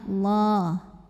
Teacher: lam jalalah dibunyikan secara tafkhim sebab huruf sebelumnya berbaris di atas barisnya fathah maka cara bacanya ditebalkan